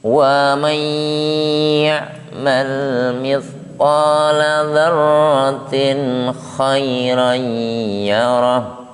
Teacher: Jadi waman di situ ada dengungan. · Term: idgham bi gunnah